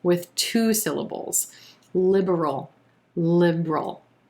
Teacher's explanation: That second syllable is so quick that a lot of times what you'll hear some people say is liberal.